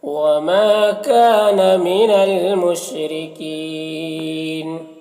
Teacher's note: وما، ما میں الف مدہ ہے، کا میں بھی الف مدہ ہے، دونوں کو ایک الف کے برابر کھینچیں گے۔ من المشرکین، را کو باریک پڑھیں گے اور کین یہاں پر وقف کی صورت میں نون کا زبر سکون سے بدل جائے گا، تو مد عارض وقفی ہوگا، تو اس طرح سے پڑھیں گے۔